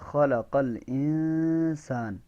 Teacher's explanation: اس نون کے اندر آواز کو روکنا ہے، اس نون کے اندر اخفا ہوگا